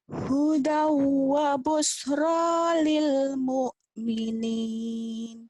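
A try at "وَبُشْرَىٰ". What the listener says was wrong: anginnya mana? Shin.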